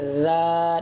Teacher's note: یہ جو زال ہے یہ بالکل سا کی طرح ہے، اس کو ادا کرتے وقت زبان اوپر کے دانتوں سے ٹچ ہو جاتی ہے